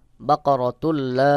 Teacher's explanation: ইদগামে বেগুন্না গুন্না ছাড়া মিলাতে হবে